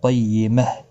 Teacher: وقف کی صورت میں ساکن ہا ساکن پڑھا جائے گا، وقف بالابدال ہوگا